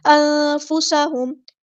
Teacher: پڑھنا، نون ساکن کی آواز کو چھپا دینا، اخفا ہوگا، انفسہم، سین کی سیٹی ہم نے واضح کرنی ہے ، انفسا نہیں، انفسہم، میم ساکن پہ یہاں پہ اظہار شفوی